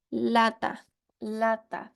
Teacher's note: fíjense que si se pone la mano enfrente de la boca el aire parece salir por las comisuras de los labios es decir por los lados de la lengua · acá luego tenemos los fonemas que son laterales en los cuales hay un cierre no total de la boca Por lo cual el aire sale por los lados de la lengua